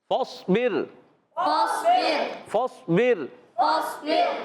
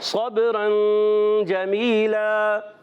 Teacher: فاصبر میں را کو باریک، صبرا میں را کو پر۔